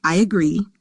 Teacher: in the phrase I agree, we often hear a ya linking the vowels at the word boundary. This helps the speech flow more naturally.